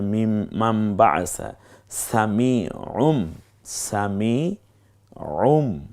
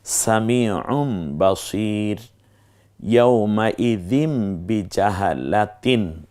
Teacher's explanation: পরের যে নটা আছে সেই নটাকে ম দ্বারা পরিবর্তন হয়ে গেছে